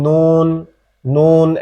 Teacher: জিহ্বার আগা তার উপরের তালুর সঙ্গে লাগাবে, লেগে উচ্চারিত হবে নুন, নুন, একদম স্বাভাবিকভাবে।